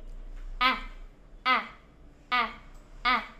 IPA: æ